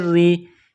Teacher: را کے نیچے زیر ہے تو را کو باریک کرنا ہے، را کو یا کے ساتھ پلس کرنا ہے.